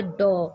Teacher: इसका उच्चारण यानी बोलने में यह ओ और औ के बीच के स्वर की तरह बोला जाता है इसको। ये न तो ओ होता है और न औ होता है, थोड़ा थोड़ा अंश दोनों का मिला होता है इसमें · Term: आगत स्वर